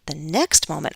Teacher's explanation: I'm going to stress next because it's not just any moment, but the next moment.